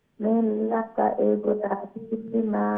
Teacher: রাকে লম্বা করতে হবে, খাড়া জবর না।